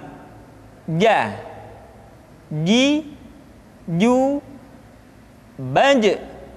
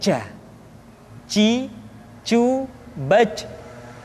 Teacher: Dikeluarkan dengan menyentuhkan tengah-tengah lidah dengan langit-langit. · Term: huruf ja